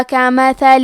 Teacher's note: کلمت مثلوں میں حرف الثا کی ادائیگی زبان کے سر اور اوپر والے دانتوں کے اندرونی کناروں سے ہے. کیونکہ میم پہ ثا پہ دونوں پہ زبر ہے تو ہم یہ دونوں زبر کو ظاہر کریں گے.